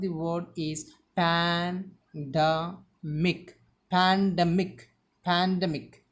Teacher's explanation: Here the stress should be given on D.